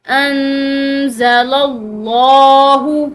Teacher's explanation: بما انزل اللہ، یہاں پر نون ساکن کے اخفاء کی وجہ یہ زا ہے، یعنی کہ نون ساکن کے بعد حروف اخفاء میں سے ایک حرف موجود ہے تو یہاں پر اخفاء کریں گے، یعنی کہ نون ساکن کی آواز کو جو ہے وہ ناک میں چھپاتے ہوئے نکالیں گے